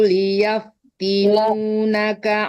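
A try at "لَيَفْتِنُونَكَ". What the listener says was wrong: Layaf bukan liyaf ya. Layaf inu.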